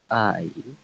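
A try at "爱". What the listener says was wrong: Enggak, nadanya enggak gitu. Ai, lanjut.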